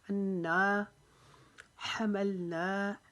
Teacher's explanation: نا کو ایک الف کے جتنا لمبا کریں گے